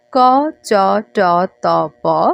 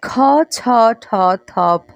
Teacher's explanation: উচ্চারণ করছেন তখন মুখ থেকে বাতাসের পরিমাণ কম বের হচ্ছে আর মহাপ্রাণ ধ্বনিগুলোর ক্ষেত্রে মুখ থেকে বের হওয়া বাতাসের পরিমাণ বেশি থাকছে